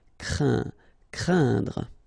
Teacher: keep in mind that it goes in your nose, so you don't hear any N when I pronounce it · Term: a nasal